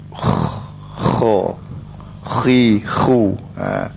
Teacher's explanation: huruf Kha ni apabila kita sebut dia ada nafas